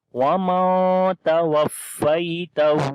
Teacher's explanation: نون ساکن ہے, اس کے بعد حروف اخفا میں سے تا آ گیا ہے تو یہاں پر نون کی آواز کو چھپا کر پڑھیں گے وَمَن تَوَفَّيْتَهُ, اور آخر میں ہا کو لمبا کریں گے, اس کے اوپر الٹا پیش ہے.